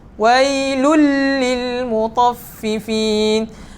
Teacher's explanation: Kita masukkan suara tanwin ke dalam huruf lam. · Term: tanpa dengung